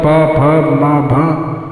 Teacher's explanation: ये दोनों ओठ सटने पर ये शब्द अक्षर निकलते हैं। पा फा, बिना ओठ सटाए न पा बोल पाओगे न फा बोल पाओगे न बोल पाओगे, जो सटेगा तभी निकलेगा। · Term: ओष्ठव